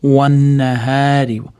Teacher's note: Wan nahari iza tajalla bu yerda ham mana alif lam nunni chekirib ketgan. Wan nahari nunni tashdidli kelganligi uchun ozgina g'unna qilib ushlab turamiz. Wan nahari hni cho'zamiz.